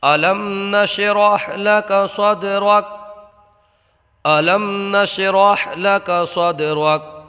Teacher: یہاں دال میں قلقلہ ہوگا، را کو پر پڑھیں گے